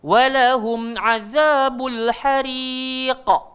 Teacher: Qa tu kuat sebab dia duduk dekat hujung kalimah. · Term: qalqalah kubra